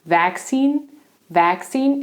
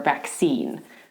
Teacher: Vaccine has two pronunciations actually. In British English, they tend to stress the first syllable